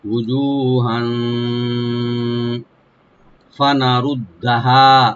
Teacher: এখানে হার উপর যে তানবিন আছে, এখানে আমরা ইখফা করব, লাইট গুন্না।